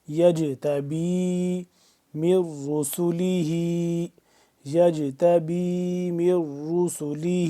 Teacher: جیم ساکن ہے تو یہاں پہ ہم کیا کریں گے، اس کے اوپر قلقلہ کر کے پڑھیں گے